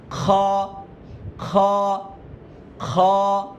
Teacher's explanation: গলার মধ্যে একটা খুশখুশ একটা আওয়াজ আসবে, আওয়াজ খ, খ, খ, আমরা সবাই বলি একসাথে খ।